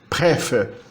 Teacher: se você escreve com P, esse P fica aspirado